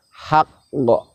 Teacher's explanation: Kemudian yang terakhir, jika kita wakof pada lafadz yang huruf terakhirnya adalah huruf qalqalah dan huruf qalqalahnya bertanda tasdid, maka cara wakofnya adalah tidak langsung dipantulkan, namun kita tahan sejenak untuk menyempurnakan makhrajnya, baru kita lepaskan pantulannya